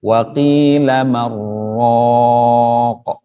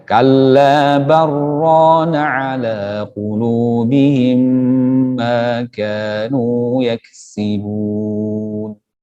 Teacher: Menjadi idgham bila gunnah. Nun mati bertemu dengan huruf ra.